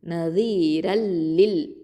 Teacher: Okay, இதுகாம் கைரி குன்னா அப்படின்னு சொல்லலாம். அப்போது குன்னா செய்யாமல் இதுகாம் பண்ணணும், இணைச்சிடணும். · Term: இதுகாம் பிலா குன்னா